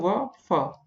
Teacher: इन वर्णों के उच्चारण में ऊपर के दांत व नीचे के ओठ का प्रयोग किया जाता है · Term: दंतोष्ठ